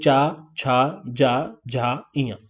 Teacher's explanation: जो आपकी जीभ है वो कहाँ, तालू में जाकर के टच हो रही है।